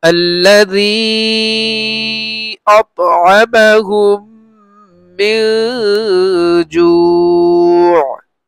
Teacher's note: জেরের পরে ইয়া সাকিন মদের হরফ, তারপরে দ্বিতীয় অক্ষরে মানে দ্বিতীয় শব্দে হামজা আসছে, মধ্যে মুনফাসিল, মুনফাসিলের চিহ্ন আছে, তিন আলিফের চিহ্ন, তিন আলিফ লম্বা করব। মদের হরফের পরে দ্বিতীয় শব্দে হামজা আসছে, এজন্য এটা মধ্যে মুনফাসিল, আর এই যে এখানে তিন আলিফের চিহ্ন আছে এটা মধ্যে মুনফাসিল, তিন আলিফ লম্বা করব। · মিম সাকিনের পরে মিম আসছে, মিম আসলে গুণা করে পড়তে হয়, এটাকে বলে ইদগাম। ইদগামে মিসলাইনে সগীর বলে।